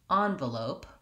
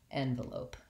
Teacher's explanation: the way I typically say envelope is by using the ah vowel on that first clear vowel